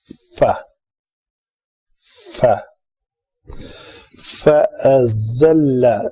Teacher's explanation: اوپر والے دانت نیچے والے ہونٹ کے ساتھ آ کے ٹکراتے ہیں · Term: فا کا مخرج